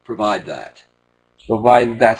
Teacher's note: almost like you're not even saying the d you're just beginning to say the d